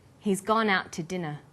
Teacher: We stress he's, gone, out, and dinner. The to is unstressed. When we link out, which is stressed, and to, which is unstressed, the final t sound in out is held slightly longer.